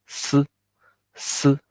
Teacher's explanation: little bit of air, also wide mouth, but light air compared to 呲.